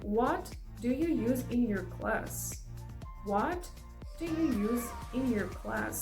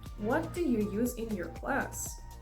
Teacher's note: you stress in the question word and then the tone of your voice goes down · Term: falling